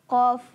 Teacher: ज़बान की जड़ और तालु के नरम हिस्से से अदा होता है